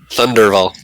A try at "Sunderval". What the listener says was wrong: Nope, with an S. Sunderval.